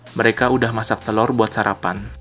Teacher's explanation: Here notice that the word sudah is reduced to udah.